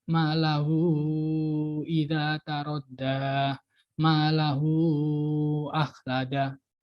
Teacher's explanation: Jadi kalau ini malahu idza tarodda, malahu akhlada. Jadi bacanya lebih panjang. Mungkin bisa sampai 4 ketukan atau 6 ketukan gitu. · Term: tawilah